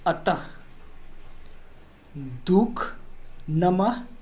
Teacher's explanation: तो ये जो विसर्ग है इसका उच्चारण हम ह के रूप में करते हैं